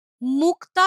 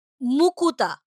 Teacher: উচ্চারণের সুবিধের জন্য সংযুক্ত ব্যঞ্জনের মাঝে স্বরধ্বনি আনার রীতি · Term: স্বরভক্তি